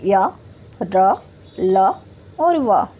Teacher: अंतस्थ व्यंजन का उच्चारण करते समय वायु का अवरोध नहीं होता है बल्कि ये आसानी से बोले जाते हैं।